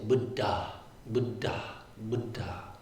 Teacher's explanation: it creates like a stop when you pronounce both consonants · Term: double consonants